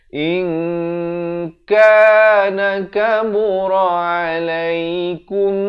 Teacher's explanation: Asalnya hamzah bari kasrah bertemu nun bunyi in. Tapi bila datang kaf, disamarkan. Nak kata nun pun tidak, kaf pun tidak. Di antara kedua-duanya itu dengan dua harakat. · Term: ikhfa hakiki